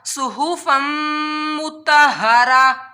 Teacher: यहाँ भी मीम शद्दत था, इस वजह से फा मीम दो ज़बर फम के ऊपर हम लोगों ने गुन्ना किया नाक में आवाज़ लेकर के